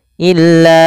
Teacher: illa panjangkan lanya sepanjang empat harakat karena ya ada bacaan mad jaiz munfasil